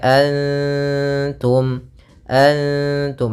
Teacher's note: huruf Ta di sini huruf ikhfa yang akrab atau bagian lisannya akrab dengan huruf nun